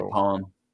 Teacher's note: the letter E becomes like basically a schwa sound